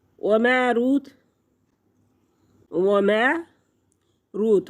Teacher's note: वाव साकिन से पहले लफ्ज़ पर पेश है तो वाव मद्दा है, एक हरकत के बराबर खींच कर पढ़ेंगे।